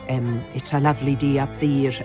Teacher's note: You can hear the Gaelic processes, aspiration and devoicing coming into the speech. It's a lovely day up there, and it all gets a little bit more softened if you're over in the Hebrides.